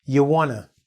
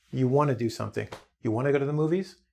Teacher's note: we're so lazy we don't even say the ja, we just say: Yawanna